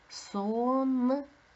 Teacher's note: перший звук у нас с твердий приголосний